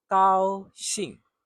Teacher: High and then a sharp fall.